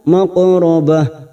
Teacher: qaf sukun qalqala sugra karena mati asli di tengah kalimat, jangan lupa dipantulkan